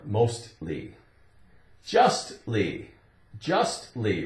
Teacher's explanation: if we say mostly l y at the end it still has that t sound